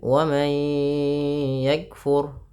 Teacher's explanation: nun sukun bertemu ya idgam bighunah tahan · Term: idgham bi gunnah